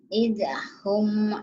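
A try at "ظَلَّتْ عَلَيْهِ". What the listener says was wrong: Jangan ada e-nya. Il. Jangan ide. Il. Lidahnya kayak dilipat. Ilhum.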